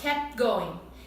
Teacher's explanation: Mas eu não preciso pronunciar esse T, porque o P fica mais forte.